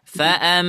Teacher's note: Nah, di sini huruf mim bertasydid. Maka mim musyaddada atau ghunnah musyaddada. Ditahan.